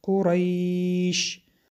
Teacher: حرف یا با سکون آمده است و پیش از آن فتحه است. این مد لین می باشد که مقدار 2، 3 تا 5 حرکت کشیده می شود.